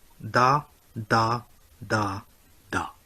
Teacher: The mid tone is there hidden as a floating tone. So phonetically you will hear only 4 level tones. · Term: four level tones